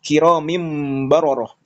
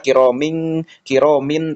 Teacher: mengubah nun sakinah ataupun tanwin menjadi huruf mim secara pelafalan bukan secara tulisan, disertai dengan ikhfa dan gunnah saat bertemu dengan ba. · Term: iklab